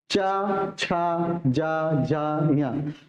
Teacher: तालु से इसमें क्या होती है? जिह्वा जो है हमारी तालु में टच कर रही है।